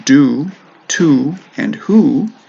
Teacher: in do, to, and who, the O actually makes an oo sound